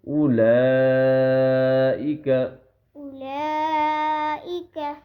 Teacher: کیونکہ یہ جو ہے یہ والی اس کے اوپر بڑی مد ہے، اس بڑی مد کو 4 سے 5 الف کے برابر کھینچتے ہیں، یعنی 4 سے 5 سیکنڈ اس کو ہم نے کھینچنا ہوتا ہے